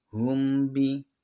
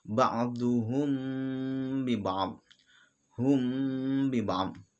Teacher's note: mim yang mati bertemu dengan ba. Maka bacaannya itu harus mendengung, samar dan mendengung. Ikhfa samar, ikhfa itu artinya ya samar, kemudian mendengung gitu. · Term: ikhfa syafawi